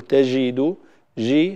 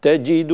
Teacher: تجد بهذه الشدة، يجب أن تكون الجيم شديدة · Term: الجيم الفصيحة